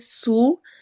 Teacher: وَرَسُولًا واو میں ہونٹ گول، را موٹا پڑھا جائے گا. سین سیٹی والی آواز اور واو میں واو مدہ ہو رہی ہے